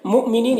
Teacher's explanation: پڑھیں گے، اس کو ادغام شفوی کہتے ہیں۔ مؤمنین یہاں پر حمزہ ساکنہ ہے واو کی شکل میں، تو جھٹکا لگتا ہے